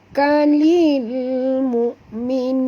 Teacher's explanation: Hamzah yang mati tuan-puan, bukan ain ya. Ramai yang salah baca, dibaca mu'minun, bukan mu tapi mu'minun.